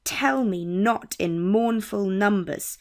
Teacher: the first syllable is stressed and the second syllable is weak, and this pattern continues for the rest of the line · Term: trochaic foot